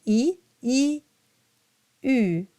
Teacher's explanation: E, U. The tongue doesn't move. It's just the lips that round around the E sound.